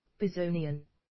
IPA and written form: bɪˈzəʊnɪən (bezonian)